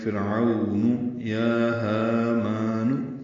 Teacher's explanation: فا کے نیچے زیر آنے کی وجہ سے را باریک ہے، عو وہ لین ہے، ہونٹ آگے کی جانب لائیں گے ، 1.5 حرکت ہی لمبا کر سکتے ہیں۔ فرعون یا ہامان،